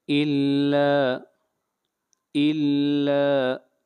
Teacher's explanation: ला को खींच कर पढ़ेंगे एक अलिफ के बराबर, मद असली है।